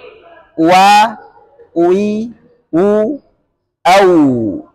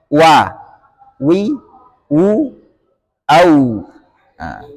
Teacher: Cara menyebutkan huruf wawu dengan memoncongkan bibir ke depan secara terbuka sedikit.